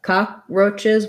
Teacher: cockroaches has first syllable stress um this is an ah vowel